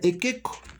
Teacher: inmediatamente la I se convierte en E y la U se convierte en O